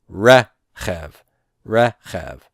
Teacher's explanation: the resh is the consonant whose vowel, segol, is being stressed. So I'm going to put that accent mark over the resh. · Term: non-final stress